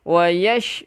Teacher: ada semburan sikit di huruf shin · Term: sifat tafasyi